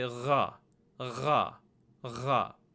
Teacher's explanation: the proper pronunciation is almost like Kha, but you use your vocal cords to vibrate it, and it's a little further down in sound.